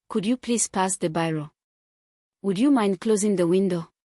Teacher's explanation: The rising intonation signals politeness and tentativeness.